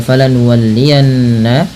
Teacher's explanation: Kemudian pada lafal falanuwalliyannaka qiblata, pada lafal yanna, tahan bunyi suara nunnya pada lafal falanuwalliyanna karena ia termasuk bacaan gunnah dengan menahan bunyi suara n-nya atau bunyi suara nunnya sepanjang 2 harokat